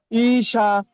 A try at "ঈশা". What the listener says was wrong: ই, এই টানটুকু হবে না। ঈশা,